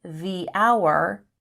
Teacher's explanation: the h in hour is silent and it begins with a vowel sound